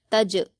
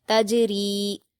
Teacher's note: تا پر حرکت جلد پڑھیں گے، جیم پر جزم ہے، تا کو جیم سے ملا کر پڑھیں گے اور قلقلہ کریں گے